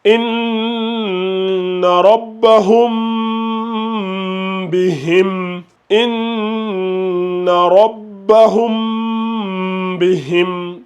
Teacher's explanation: On fait bien le nasillement tout en faisant le ikhfa.